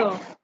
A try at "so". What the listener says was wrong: Not sir. Sir means your tongue is coming out. Sir, sir. So see where my tongue is. sh, my tongue touches the upper part of my mouth, the upper ridge of my mouth.